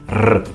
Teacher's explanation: both Italians and Spanish, and I believe Portuguese, roll the R.